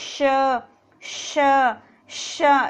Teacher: हमारी जो जीवा है वो तालु से टकरा रही है। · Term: तालव्य